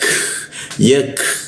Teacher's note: Lidahnya diturunkan sehingga huruf membaca huruf K itu ada hembusan udaranya